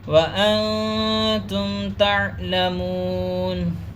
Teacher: ناک میں آواز کو لے کے جائیں گے، اخفا کریں گے، کیونکہ نون ساکن کے بعد تا ہے، حروف اخفا میں سے، اس لیے اخفا کریں گے۔